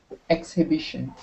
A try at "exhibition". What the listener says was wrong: Uh-huh, just like that.